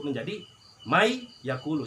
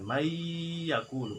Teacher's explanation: Contohnya man yakulu menjadi mai yakulu, si nunnya masuk ke iya. Nanti juga ada ukurannya berapa, enggak asal-asal dibacanya mai yakulu enggak, tapi harus ada 2 ketukan, mai yakulu gitu. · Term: idgham